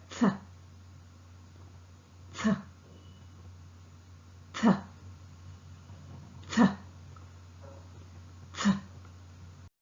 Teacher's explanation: Th sound is a voiceless sound and articulated with the tip of the tongue close to the upper front teeth. The air escapes between the upper front teeth and tip of the tongue. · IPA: θ